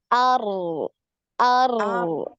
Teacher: Nah, alirkan. Disukun ngalir ya. Suara dari huruf ro ini ngalir.